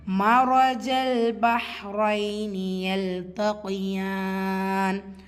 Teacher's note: மரஜல் ரா ஃபத்தா பேச்சு வந்திருக்கு, வல்லினமாக ஓதணும்